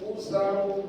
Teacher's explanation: An ini hukumnya adalah ikhfa. Cara bacanya satukan gigi.